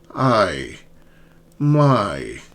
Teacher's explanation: Two vowels a and e a e i. I my start with an open a and glide to ei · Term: diff thongs